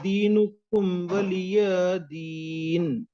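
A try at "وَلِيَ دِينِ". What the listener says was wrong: वली दीन, या को जल्दी पढ़ेंगे।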